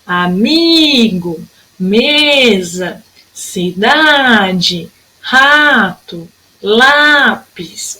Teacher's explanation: sílaba tônica é sempre a penúltima de todas essas palavrinhas